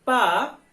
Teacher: बोल के देखेंगे, पा दोनों होठ जो है टच कर रहा है, स्पर्श कर रहा है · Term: पवर्ग